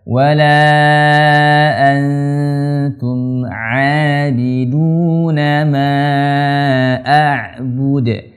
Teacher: Huruf ain, huruf yang tengah tenggorokan, hurufnya tipis dan rendah.